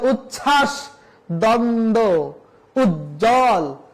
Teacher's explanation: পরে উজ্জ্বল বরকত জ, তার সাথে জ যুক্ত হচ্ছে, তার সাথে ব, তাহলে যুক্ত ব্যঞ্জনের সাথে যদি ব ফলা থাকে তাহলে স্পষ্ট করে বলে দেওয়া হচ্ছে সে বয়ের কোনো উচ্চারণ হবে না। সে যে উচ্ছ্বাস, দ্বন্দ্ব, উজ্জ্বল, এখানে কোথাও বয়ের উচ্চারণ হয়নি